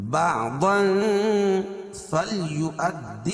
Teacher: تنوین کے بعد حروف اخفاء کے 15 حرفوں میں سے فا ہے، تو یہاں ناک میں آواز کو چھپا کر پڑھیں گے